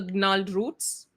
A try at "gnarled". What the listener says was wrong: G silent. G silent. No need. No need. No need for that.